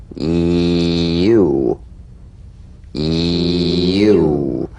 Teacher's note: Feel the Y buzz quickly cut off as it slides into the following vowel.